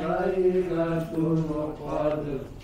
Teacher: Huruf dalnya juga kita sempurnakan bukan Qadar ya bukan Da tapi dia sukun pantulkan